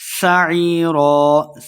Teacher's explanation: سین پہ سیٹی کی آواز آئے گی، عین زیعی یا مد ہے، 2 حرکات لمبا کر کے پڑھنا ہے، اور آخر پہ ہم نے ایک زبر کے ساتھ اس کو پڑھیں گے، وقف کریں گے۔